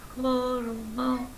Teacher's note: ہو کو لمبا نہیں کریں گے، صرف دوسرے حلق سے ادا کریں گے ہا کو